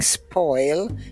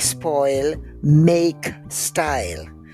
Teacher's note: we do not use the rounded vowels in Jamaica. They're all broad A vowels. We, instead of saying spoil, we say spoil.